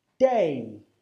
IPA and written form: deɪ (day)